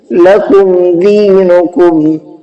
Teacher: میم ساکن کے بعد میں دال آیا جس کی وجہ سے ہم نے میم کی آواز کو ظاہر کر کے پڑھا ہے